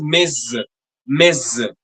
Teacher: that final S sound is linked to the next vowel sound and we pronounce it like a zed and is pronounced as miz.